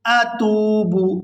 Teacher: یہاں تا کو واو ساکن کے ساتھ ملائیں گے تو کھینچ کر ادا کریں گے